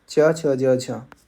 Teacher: वायु के उच्चारण स्थान पर अधिक समय तक रुक कर संघर्ष करने के कारण इन्हें क्या कहा जाता है? स्पर्श संघर्षी कहा जाता है।